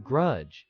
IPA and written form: ɡrʌdʒ (grudge)